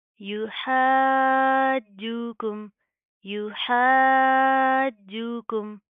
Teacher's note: युहाज्जुकुम, या पेश यू, हा अलिफ जीम मद ज़बर हा, जीम वाव पेश जू, हाजू, काफ मीम पेश कुम, युहाज्जुकुम, युहाज्जुकुम, हा के साथ का अलिफ भी पढ़ा जाएगा, मद आ रही है, लंबा करेंगे, खींच कर पढ़ेंगे। जीम के अंदर आपने ची की साउंड पैदा करने से बचाना है, शद आ रही है तो इसको सख्ती से मजबूती से जमा कर पढ़ेंगे, ठीक है।